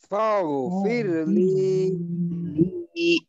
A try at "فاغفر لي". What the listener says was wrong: ফায়ের হরকত লম্বা করার দরকার নেই বা এখানে লম্বা হবেও না, ফাগ ফাগ এখানে যেন ফাগ এমনটা না হয়, ফাগফিরলি